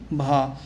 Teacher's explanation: ओट महाप्राण घोष व्यंजन वर्ण का उदाहरण भा है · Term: ओष्ठ महाप्राण घोष